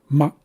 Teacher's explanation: You're not going to hear any kind of difference from a regular M, but you will hear a slight pause before this second M. So we say ma and then we close our glattus. We cut off the airflow.